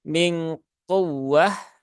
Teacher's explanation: Nun sukun bertemu dengan qaf. Maka untuk ikhfa ab'ad suaranya dia berubah ya. Suaranya yang keluar adalah bunyi eng